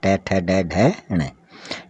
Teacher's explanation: ट वर्ग में ट ठ ड ढ ण, ये मूर्धा में आते हैं, इनको बोलते हैं मूर्धन्य वर्ण